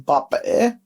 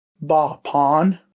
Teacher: we're going to drop the short vowel sound and the glottal stop and add our suffix